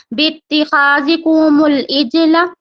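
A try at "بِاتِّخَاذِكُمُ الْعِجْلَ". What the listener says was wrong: बित्तिखाज़िकुमुल इज्ल। अगर आप यहाँ पे वफ कर रही हैं तो लाम को साकिन करेंगे, कैसे पढ़ेंगे? इज्ल।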